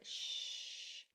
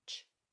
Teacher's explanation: SH is sustained. You can hold on to it. Shh. CH is fast. Ch, super fast, which is in this word.